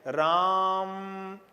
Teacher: अगर आप बोलते हैं राम, तो यहां आ को आपने थोड़ा और खींच लिया, म को भी आपने खींच लिया